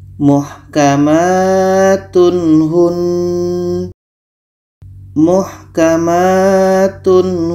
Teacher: ini ada tanwin bertemu ha ha adalah huruf Izhar halq maka ini dibaca jelas tanwin jelas ha jelas dan tidak ada dengung